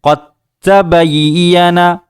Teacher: قاف کو ڈائریکٹ تا میں ادغام کر دیا، اس کو تا میں ملا دیا اور دال کی آواز کو ختم کر دیا